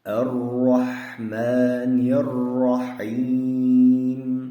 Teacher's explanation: Mana bu joyda ro harflarida tashdid kelyapti. Bu ro harflari yo'g'on o'qilinadigan harflar qatoriga kiradi. Ya'ni fatha hamda zamma harflari kelganda yo'g'on o'qilinadi.